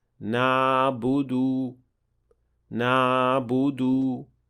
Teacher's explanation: leaving too big an opening between the wall of your throat and the epiglottis, producing what we call in tajweed a floating ayn · So this ayn is closer to an alif rather than an actual ayn, and this should also be avoided.